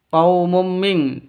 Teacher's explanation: Cara bacanya samar didengungkan siap-siap ke huruf qofnya. Kenapa? Karena ini terus non matinya ditambah dengan ng makanya disebut e dibacanya ming seperti itu ya. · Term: ikhfa hakiki